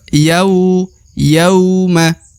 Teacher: huruf ya di depannya terdapat wau sukun maka harus diayun sekali atau dibaca Dua harakat